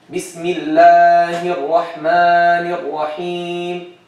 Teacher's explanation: he's making the mad tabi'i more than tabi'i, right?